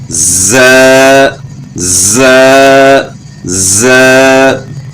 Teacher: نیچے دانتوں کے ساتھ زبان ٹچ ہو گئی تو پھر زا کی آواز بن جاتی ہے. تو زا جو ہے نا اس میں سیٹی کی مثل آواز پیدا ہوگی.